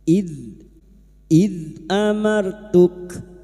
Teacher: huruf dalal memiliki sifat jahar dan rakhaah yaitu tertahannya nafas dan mengalirnya suara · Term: jahar dan rokhwah